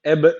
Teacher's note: ik elif miktarı uzatacağım neden ik Elif Çünkü hadır usulünde okuyorum hadır usulünde meddi muttasıl iki elif miktarı uzatılır